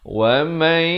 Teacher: idgham bi gunnah, masuk beserta dengung 2 harakat.